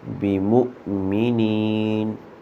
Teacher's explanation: حمزہ کو جھٹکا دے کے پڑھیں گے